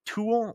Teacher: with the M not being pronounced and the U being nasalized